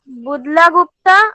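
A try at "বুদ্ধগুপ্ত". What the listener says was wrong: না বুদলা না বুদ্ধা বুদ্ধা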